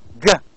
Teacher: the back of the tongue with the area which is called as velum. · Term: velar